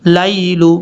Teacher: ہے، صرف ہم حمزہ کو لمبا کریں گے، وَآیَةٌ لَهُمُ اللَّيْلُ، لام کے بعد جو یا ہے یہ یا لین ہے، اس کو لمبا نہیں کرنا